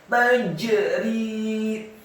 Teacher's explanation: jimnya dibaca sukun, tafkhim tebal dan wajib untuk diqalqalahkan · ro-nya dibaca tipis, kasrah 2 harokat karena setelahnya ada ya sukun